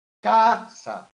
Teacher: El golpe de voz, ¿dónde le doy? En la primera A.